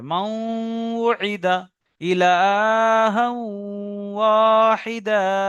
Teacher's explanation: ওয়ের উদাহরণ, মাউইদা, এখানে দেখেন নুন সাকিনের পরে ওয়াও এসছে, তাহলে ইউমিনের চারটি অক্ষরের মধ্যে থেকে নুন সাকিনের পরে ওয়াও এসছে, তাই নুন সাকিনকে অ এর সঙ্গে মিলিয়ে একালি পরিমাণ গণনা করে পড়তে হবে।